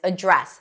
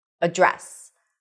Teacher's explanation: when you use this word as a verb – I'm going to address this issue – you can only use one pronunciation, and that is addRESS, stress is on the second syllable.